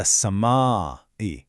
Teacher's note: It's a mandatory stretch of four counts. And a count is just the time it takes to say open or close your finger. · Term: madd muttasil